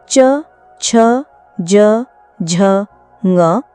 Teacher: च वर्ग के सभी वर्ण च, छ, ज, झ, ग तालव्य व्यंजन हैं। तालव्य व्यंजन वे होते हैं जिनका उच्चारण जीभ के अग्र भाग और तालु यानी मुंह के ऊपरी छत का अगला भाग के स्पर्श से होता है। इनके उच्चारण में तालु पर दबाव पड़ता है। · इनके उच्चारण में तालु पर दबाव पड़ता है। च वर्ग के व्यंजन स्पर्श संघर्षी व्यंजन भी कहलाते हैं क्योंकि इनके उच्चारण में स्पर्श के साथ-साथ थोड़ी संघर्ष ध्वनि भी होती है। तालव्य व्यंजन का उच्चारण करते समय जी तालू से हल्का घर्षण करती है।